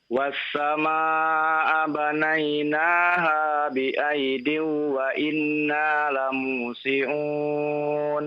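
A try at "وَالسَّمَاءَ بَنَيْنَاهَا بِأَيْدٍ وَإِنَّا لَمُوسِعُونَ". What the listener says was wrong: Bi'aidiw gunnah, idgham bi gunnah. Ditahan lagi ya.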